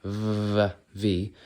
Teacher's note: v is by connecting the lower teeth to the top lip